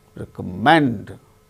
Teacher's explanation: recommend third syllable gain stress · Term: word stress